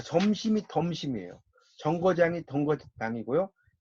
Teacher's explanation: 다른 지역에서는 이나 제이 앞에서 지읒이나 치읒으로 구개음화되는 것을 디귿과 티읒을 써요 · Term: 평안도 방언